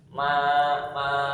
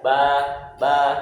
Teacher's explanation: tempatnya dia di dua bibir Ma tapi ada suaranya itu masuk ke hidung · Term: mim